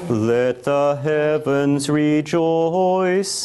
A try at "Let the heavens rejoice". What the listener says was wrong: I wonder, couldn't we make heaven just one syllable? Let the heavens rejoice.